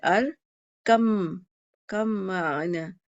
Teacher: با نکل گیا، با میم میں مدغم ہو گیا. ٹھیک ہے، تو اس میں با رہا ہی نہیں، تو ارکم معنا.